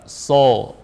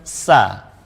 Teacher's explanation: Al-isti'la maksudnya adalah kita mengangkat pangkal lidah kita ketika membunyikan shad, sehingga suaranya shad itu lari ke atas ya. Maka kita pun mendengarnya dengan tebal, so, meskipun kasroh juga si.